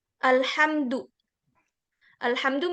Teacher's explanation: Kalau izhar itu alhamdu mimnya jelas enggak hilang